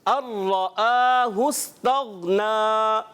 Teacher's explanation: ادغام ملائیں گے مگر نون را میں مل گیا، پانی دودھ میں مل گیا، اور ایسا ملا کہ نظر ہی نہیں آیا